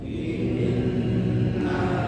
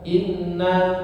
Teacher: Kalau kita konversi ke mad itu seperti 3 harokat mad kurang lebih, ya. 2 harokat ghunnah itu kurang lebih 3 harokat mad, ya, dan berdengung. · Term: gunnah mutawwalah